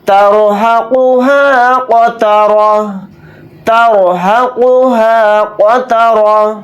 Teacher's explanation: یہاں پر رائے ساکنہ کو موٹا یعنی پر پڑھیں گے. قاف کو موٹا پڑھیں گے.